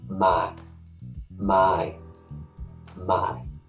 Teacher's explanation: The way that we do that is we change the English diphthong of I, my, to my. So it's a ma, and right at the end there's a tiny little I.